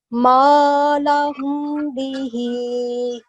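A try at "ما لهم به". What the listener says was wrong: No, that's wrong. We will do a meme gunna sound. Why? Because we have ba next to it. So remember, there are only two letters where we are going to do a gunna sound. Meme gunna sound.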